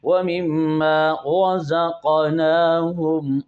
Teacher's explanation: را پر زبر ہے، اسے خوب موٹا کر کے پڑھیں۔